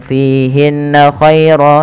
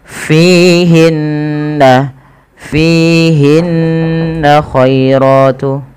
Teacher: ada gunnah pada lafal bacaan nun berharakat tasydid. Hukum gunnah merupakan tingkatan tertinggi dalam bacaan gunnah, yaitu ketika ada nun tasydid atau mim tasydid.